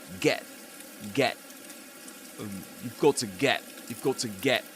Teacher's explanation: rather than glottal reinforcement, you get glottal replacement, which means that the glaual stop replaces the t sound because the the word is get, right? · the glottal stop replaces the T sound